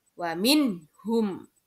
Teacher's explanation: ketika ada nun sukun bertemu dengan ha maka harus dibaca jelas atau terang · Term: izhar